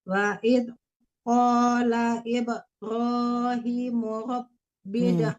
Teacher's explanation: Ibrahim dipanjangkan hi-nya karena dia kasrahnya berdiri.